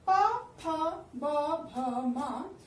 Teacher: ये ध्वनियां हमारे होठों के मिलने से निकलती हैं, इसलिए इन्हें ओष्ठ ध्वनियां भी कहते हैं।